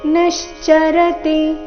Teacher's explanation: ನಿಶ್ಚರತಿ ನೀ ಮೇಲೆ ಆಘಾತ